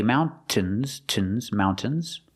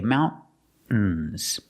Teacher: Both are correct. So you can pronounce the T and say mountains, mountains. Or you can use a stop T and say mountains. Use a stop T, mount, and then you fall to the N.